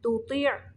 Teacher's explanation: تا کو باریک پڑھنا ہے، تو کو تھوڑا موٹا پڑھنا ہے